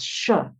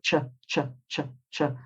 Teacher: when you do the sh sound, your tongue doesn't touch the roof of your mouth, you're allowing a little space between your tongue and the roof of your mouth